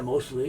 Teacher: Often this T disappears in quick, casual conversation.